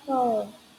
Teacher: Bunyi A dalam kata ini diucapkan seperti bunyi O yang panjang, jadi pelafalannya mirip dengan call.